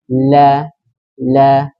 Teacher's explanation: Baik, la itu aslinya dia keluarnya di ujung lidah, tapi nggak jadi. Dia inhiraf karena terhalang lisan yang menyentuh gigi seri atas tuh. Nah, tidak bisa keluar dari situ. Makanya menyamping ke samping lidah.